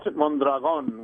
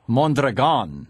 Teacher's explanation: with the accent on the last syllable